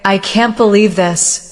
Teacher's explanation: If you say, I can't believe this, with a downward tone, it may show disappointment.